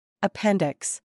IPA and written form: əˈpɛn dɪks (appendix)